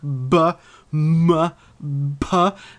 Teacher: the lips are entirely closed and that's totally necessary to create sounds like b m